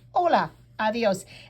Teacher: a D is a soft, almost a TH sound